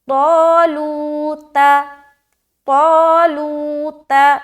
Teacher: یہ جو طا ہے جو شروعات میں ہے، اسٹارٹنگ میں، اس کو موٹا پڑھیں گے